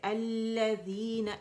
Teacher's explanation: یہ لام جو لام التعریف جو ہے وہ لام شمسی کے اندر جا کے مرج ہو گئی ہے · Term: لام شمسیہ